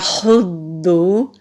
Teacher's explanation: خا کو حلق سے نکالیں گے اور دعد حروف مستعلیہ میں سے ہے تو مضبوطی کے ساتھ پڑھیں گے، موٹے حروف میں سے ہے موٹا بھی کریں گے۔